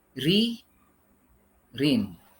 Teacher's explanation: Hukum bacaan huruf ra yang kedua, yakni hukum bacaan huruf ra dibaca tarqiq atau tipis, yakni melafalkan atau membunyikan huruf ra dengan menipiskan atau mengkuruskan sehingga gema huruf ra tidak memenuhi rongga mulut kita. Huruf ra akan dibaca dengan tipis atau tarqiq apabila huruf ra berbaris kasrah atau kasratain.